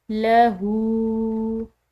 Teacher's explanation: یہاں پر ہا کے اوپر الٹی پیش آ رہی ہے، تو الٹی پیش جو ہے اس کو عام پیش یعنی کہ بڑی پیش کے مقابلے میں کھنچاؤ سے ادا کیا جاتا ہے ، اور یہ کھنچاؤ سے ادا کرنا ایک الف کے برابر